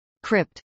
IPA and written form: krɪpt (crypt)